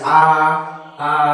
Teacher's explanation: জিভটা আমাদের নিচের দিকে থাকছে, জিহ্বাটা নিচের দিকে থাকছে, সে কারণে এটা নিম্ন